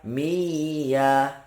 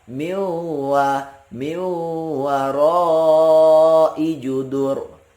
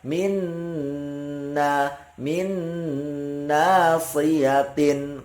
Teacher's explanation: Kemudian wa adghiman bi gunnatin fi yumina, dan diidghamkan tapi dengan gunnah, dengan dengung di yumina ketika bertemu dengan huruf ya, mim sama nun.